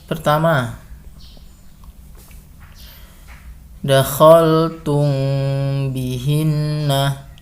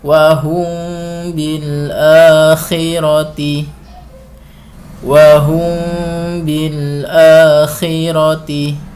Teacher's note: bibir Ikhfa Syafawi terjadi apabila mim mati bertemu dengan huruf ba cara membacanya dengan menyamarkan bacaan mim mim mati di bibir sambil didengungkan ditahan didengungkan dua harakat